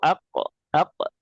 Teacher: pangkal lidah berarti yang paling belakang kemudian didekatkan ke langit-langit itu qof.